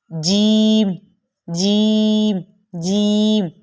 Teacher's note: آپ کو یہ محسوس ہو رہا ہوگا کہ ہماری زبان کا بیچ والا حصہ پہلے چپک رہا ہے اور پھر جیم ادا ہو رہا ہے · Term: جیم کا مخرج